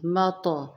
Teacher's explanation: مطو، میم کو تو کے اوپر ملائیں گے اور یہاں پہ تو کے اوپر جزم ہے تو یہاں پہ کیا ہوگا؟ قلقلہ ہوگا، یعنی نمایاں پڑھیں گے۔ مطو، نارمل نہیں پڑھنا، مت نہیں پڑھنا، مطو نمایاں۔